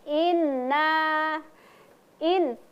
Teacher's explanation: inna nunnya berharakat fathah kemudian di depannya ada alif. Maka cara membacanya dua ketukan inna in. Karena itu ada tasdid juga maka ee harus disempurnakan juga tasdidnya.